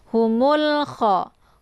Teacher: bunyi lamnya itu dibaca jelas, langsung masuk ke huruf kha ya, tanpa harus ditahan